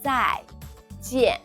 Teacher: Both 在 and 见 are in the fourth tone, the falling tone.